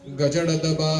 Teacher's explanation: These are voiced but non aspirated.